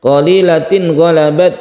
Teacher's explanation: ada tanwin bertemu dengan ghain disebut izhar halqi. Jadi ghain ini juga termasuk huruf tenggorokan atau makhrajnya ada di halqi.